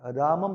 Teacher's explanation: अर्थात अनुस्वार का उच्चारण स्थान नासिका होती है।